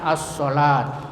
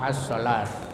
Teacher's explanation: Cara membacanya dengan mengidghamkan atau mentasdidkan pada huruf syamsiyah ya, sehingga alif lamnya tidak terbaca lagi meskipun tulisannya tetap ada. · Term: idgham syamsiyah